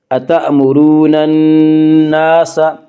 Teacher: نون مشدد غنہ ہوگا، غنہ کی مقدار ایک الف ہے۔